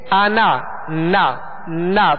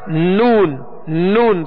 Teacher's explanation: حالانکہ نون کا مخرج ناک نہیں ہے، نون کا مخرج ناک نہیں ہے، میم کا مخرج ناک نہیں ہے، مگر تھوڑی سی آواز جو ناک کی طرف سے لوٹ کر آ رہی ہے یہ غنہ ہے، اور اسے کہتے ہیں غنہ آنی.